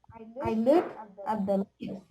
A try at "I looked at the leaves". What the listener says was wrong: No, hold up. Sound the T sound. Looked.